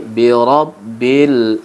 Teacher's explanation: Seperti juga di rabbi bukan robi, tapi bi rabbil ada alif lam. Alif lamnya diberi tanda mati, cocok dengan alif lam qamariyah karena kita baca jelas huruf lamnya.